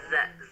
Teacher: Nah, ini berbeda ya makhrajnya dengan huruf zai. Kalau huruf zai itu ujung lidahnya ditempelkan ke bawah bagian gigi seri bagian bawah ya, di dalamnya.